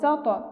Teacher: তর উপর সাকিন অর্থাৎ কলকলা হরফের উপর সাকিন, আমরা কলকলার প্রতিধ্বনি করে পড়ব।